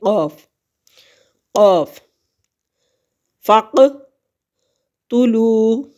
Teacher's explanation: قوف موٹا پڑھیں گے، زبان کا پچھلا حصہ اٹھتا ہے اور تالو کے نرم حصے کو مس کرتے ہوئے